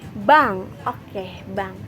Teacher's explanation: Dalam produksi bunyi nasal, velum atau langit-langit lunak diturunkan sehingga jalur udara keluar terbuka